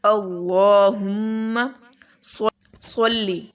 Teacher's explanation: اللہم، اللہم، لام کے اوپر کھڑا زبر ہے اور لام کو موٹا پڑھیں گے، میم کے اوپر شد ہے، اس پر غنہ کریں گے